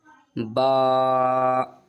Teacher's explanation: با میں دونوں ہونٹ ملیں گے اور ایسے ہی ملنے کا ساتھ ساتھ اپنا آپ ہی اوپر آرام سے اس کو اٹھا لیں گے ہم، ایسے با۔